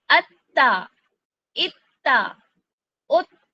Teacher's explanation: जैसे ही मैंने हमजा को ता से मिलाया मैंने अपने मखरज से जुबान नहीं हटाई बल्कि सख्ती के साथ इसको पकड़ कर रखा · جیسے ہی میں نے حمزہ کو تا سے ملایا، میں نے اپنے مخرج سے زبان نہیں ہٹائی بلکہ سختی کے ساتھ اس کو پکڑ کر رکھا، پھر اس کی حرکت کو ادا کیا.